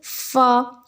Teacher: होंठ के भी हिस्से होते हैं तो जिन निचले होंठ का तर हिस्सा होता है वहाँ से फ़ा अदा होता है। जैसे फ़ा, ऊपर का दांत का जो निचला किनारा है वो नीचे वाले होंठ के तर हिस्से से आके लग जाता है। · ऊपर के दांतों के किनारे और निचले होंठ के तर हिस्से से अदा होता है। होंठ के भी हिस्से होते हैं तो जिन निचले होंठ का तर हिस्सा होता है वहाँ से फ़ा अदा होता है।